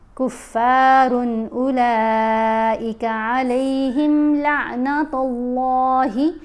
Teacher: اللہ کی لام کو موٹا پڑھیں گے، اللہ کی لام کو موٹا پڑھتے ہیں جب اس لام سے پہلے حرف کے اوپر زبر یا پیش ہو، جیسے تا کے اوپر پیش ہے تو اب ہم نے اللہ کی لام کو موٹا پڑھنا ہے۔